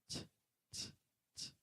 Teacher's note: the T is the tongue tip touching the back of the teeth